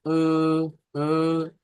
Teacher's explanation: kalau taklil, dia lebih condong kepada fathah